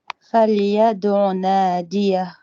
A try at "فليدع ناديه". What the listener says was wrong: Voilà, franchement, c'est pas mal.